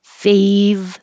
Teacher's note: Keep making your V sound until you release and make an R. As I'm making my V with my bottom lip on my top teeth, well, bottom lip a little over the top teeth, making that vibration. Fave. The tongue is on the inside, making the R already.